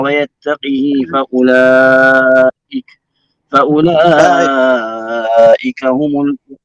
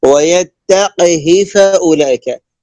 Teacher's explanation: الهاء هنا مكسورة وليست بعدها ياء